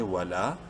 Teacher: الف مدہ کی وجہ سے لام کو ایک الف برابر لمبا کریں گے